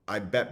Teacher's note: there's an example of a glottalized or glottal stop